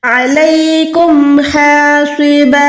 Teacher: मीम साकिन के बाद हा है तो आपने यहाँ पर हरगिज़ गुन्ना नहीं करना।